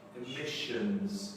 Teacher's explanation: the two S's together sounds like a sh.